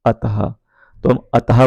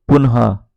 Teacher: विसर्ग का जो उच्चारण होता है वो ह की भांति होता है।